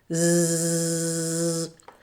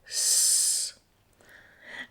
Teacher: You should feel a vibration here when it's voiced for the Z sound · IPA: /z/